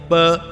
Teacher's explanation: प इसका ओष्ठ स्थान और स्पष्ट प्रयत्न दोनों ओष्ठों को मिलाकर बोलना